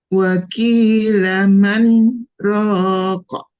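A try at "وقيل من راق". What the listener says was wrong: Kemudian ki-nya hati-hati tertukar dengan huruf kaf. Waki, waki, wakilaman. Man, jedanya kurang tambahan sedikit lagi. Man, rokok. Man, rokok. Kalau ro panjangnya berapa? Nah, kita ambil yang 4 ya. Jadi ambil yang 4. Kenapa bisa 4, Bu? Masih ingat? Enggak? Kan bisa 2, bisa 4, bisa 6.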